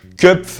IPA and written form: ˈkœ.p͡fə (Köpfe)